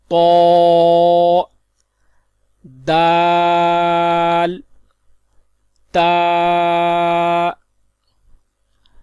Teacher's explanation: ان 3 حروف کا مخرج زبان کی نوک اور اوپر کے دانتوں کی جڑ سے ادا ہوتے ہیں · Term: حروف نطعیہ